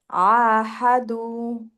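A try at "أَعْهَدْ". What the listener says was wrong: না, ধীরে ধীরে না, আহা এরকম না, আহাদু। না, দেখছেন যে আপনি ঢেউ দেন না, এতে কি হচ্ছে? আহাদু। এতে কি হচ্ছে? আপনার আইনের মাত্রা বড় হচ্ছে আর দুইয়ের মাত্রা ছোট হচ্ছে, বুঝছেন? তো মাত্রা বি সব সময় সমান। তো আপনাকে এটা মেনটেন করতে হলে ফ্ল্যাট রাখতে হবে। আহাদু।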